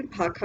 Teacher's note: मूर्धन्य श का उच्चारण राजस्थानी में प्रायः ख के रूप में होता है